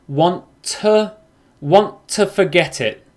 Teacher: with want and to, you can turn to into a schwa